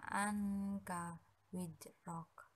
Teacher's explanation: itu dinamakan ikhfa karena huruf nun sukun bertemu dengan huruf k cara membacanya yaitu samar dengan dengung dan ditahan selama di tiga harokat